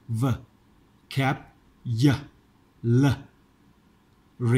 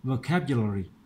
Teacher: มีชวาอยู่3จุด1▁2▁3เสียงต้องไม่ชัดเสียงสระต้องไม่ชัดนะ